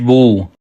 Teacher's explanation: الٹا پیش کو ایک الف کے برابر کھینچ کر پڑھتے ہیں۔ الٹا پیش کو پڑھتے وقت 3 باتوں کا خیال رکھنا چاہیے، کھینچ کر پڑھیں، بغیر جھٹکا دے کر پڑھیں، معروف پڑھیں۔